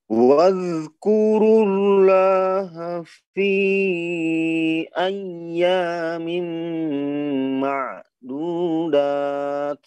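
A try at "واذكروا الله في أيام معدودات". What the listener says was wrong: Jangan jangan ada tsnya ya, tak bukan bukan gitu, jangan ada c-nya ya. Hamas tidak begitu, itu namanya bukan hamas kalau apa namanya membaca ma'dudat. Nah ini bukan hamas, melainkan dia sudah menambah huruf kita ya. Ma'dudat tak gitu ya bunyinya.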